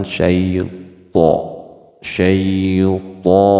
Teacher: bukan huruf ta melainkan to, jadi agak monyong mulut kita dan ditebalkan